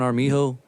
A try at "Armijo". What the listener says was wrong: Armijo. No, it just sounds like you're saying like our mijo. like my son.